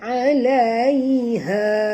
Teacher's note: bunyikan daripada makhrajnya ialah di pangkal tekak ya, alaiha. Okey, ha di sini dua harakat asli. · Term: ha simpul